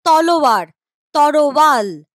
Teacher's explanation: এই যে দেখো ল আর র জায়গা পাল্টাপাল্টি করে নিয়েছে নিজেদের মধ্যে। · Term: ধ্বনি বিপর্যয়